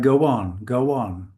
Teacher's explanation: This is a kind of W coming in there. We can call it a glide in a linguistic way.